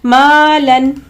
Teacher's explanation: یہاں بھی دیکھیں الف سے پہلے باریک حرف ہے، یعنی یہاں بھی اس الف کو بھی باریک پڑھنا ہے